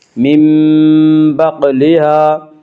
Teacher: اس کا قاعدہ یہ ہے کہ نون ساکن یا تنوین کے بعد اگر با آئے تو وہاں قلب ہوگا، یعنی نون ساکن اور تنوین کو میم سے بدل کر غنہ کے ساتھ پڑھیں گی، من بقلها، قاف میں قلقلہ ہوگا، قاف حروف قلقلہ میں سے حروف قلقلہ 5 ہیں جن کا مجموعہ قطب جد ہے، یعنی قاف طا با جیم دال۔